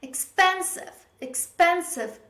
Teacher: It's the wrong stress in the word. The correct stress is on the second syllable.